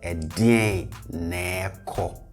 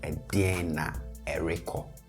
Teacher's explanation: in natural and especially fast speech, we tend to glide over the re and not mention it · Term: the glide